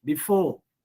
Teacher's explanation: So you have to put stress on for.